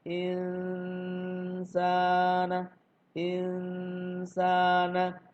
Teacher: Bagaimana cara mengucapkan huruf ikfa? Yaitu lidah kita mempersiapkan untuk mengucapkan huruf sin, huruf di depan setelah nun itu kita ikfakan, kita samar-samarkan.